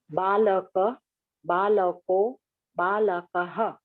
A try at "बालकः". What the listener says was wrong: Balakah. Visarga must be pronounced. Balakaha, not balakaha.